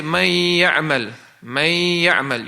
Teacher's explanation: You did the ghunna, and then you connected, you drop the noon, and you connected to the ya, the mim to the ya. Now you could still kind of hear the noon, but you've dropped it. The attribute of it is still there, but you have dropped the letter. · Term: Idgham naqis